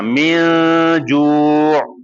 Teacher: ہاں، ناک میں آواز چھپانی، کیونکہ غنہ کا مطلب ہے آواز کو ناک میں چھپانا، اور آپ نے پھر غنہ کرنا ہے یعنی لمبا بھی کرنا ہے